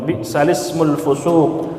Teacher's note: Bi'sal ismu dibaca bi'salismu. Naqal itu memindahkan harakat hamzah pada huruf sebelumnya.